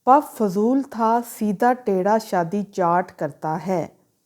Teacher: इस सेंटेंस की हर वर्ड का जो स्टार्टिंग जो साउंड है वो हमारे पास वॉइसलेस साउंड है